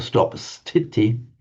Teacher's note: you get a sibilant, the s, followed by a stop, stiti. Pali will drop the sibilant, so it becomes titi, and sometimes the T will become retroflex.